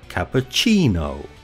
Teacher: The main stress is on the third syllable, cappuccino. Notice this mark before the first syllable.